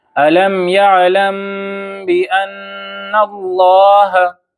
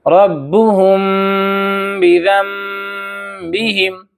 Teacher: اخفائے میم ساکن کا مطلب یہ ہے کہ ہم میم ساکن کو غنہ اور اخفا کے ساتھ پڑھیں گے۔ جیسے یہاں پر دیکھ لیجئے سورۃ الفیل میں میم ساکن ہے، میم ساکن کے بعد با ہے، اور یہاں پر آپ کو پنک کلر بھی نظر آ رہا ہے تو ہم اس کو ایسے پڑھیں گے تغمیہم بحجا، ہے نا؟